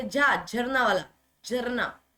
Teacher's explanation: तालव्य महाप्राण घोष वर्ण